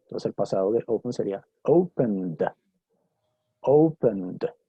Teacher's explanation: Si la pronunciación del verbo termina en un sonido sonoro, ¿cierto? Por ejemplo, N, ¿sí? Entonces lo pronuncio ese sufijo ed con un sonido de D.